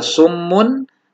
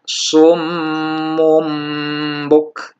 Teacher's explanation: menukar atau mengganti huruf nun mati atau tanwinnya dengan huruf mim mati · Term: iqlab